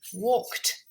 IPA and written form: wɔːkt (Walked)